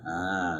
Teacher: Terus dalam satu kalimat. Nah, ya bertasydid bertemu dengan ya sukun dalam satu kalimat. Ya an-nabiyina ya ditamkinkan, ditekan an-nabiyina ya, jangan hanya sekedar an-nabiyina, itu belum namanya mad ya.